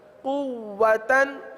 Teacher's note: جی واو پر تشدید ہے اور واو کو تھوڑا سا رک کر پڑھیں گے